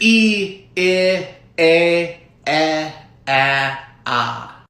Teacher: Those are all unrounded vowels.